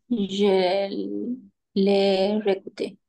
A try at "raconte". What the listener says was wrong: Sin la E al final. Raconte. Hay una. Porque si no, si decimos raconté, ese ya sería el pasado.